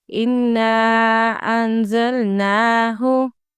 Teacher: اِنَّا کو 3 سیکنڈز کے لیے لمبا کر کے پڑھنا ہے۔ اس کو عربک میں مد منفصل بولتے ہیں۔